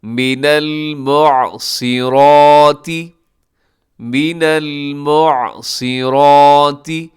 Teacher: اس میں کون سے حروف ہیں جو موٹے پڑے جاتے ہیں؟ ایک صاد اور ایک را موٹے پڑی جائے گی۔ را کے اوپر کھڑی زبر ہے، اب جس حرف کے اوپر کھڑی زبر ہو اسے آپ لازمی لمبا کیا کریں گے۔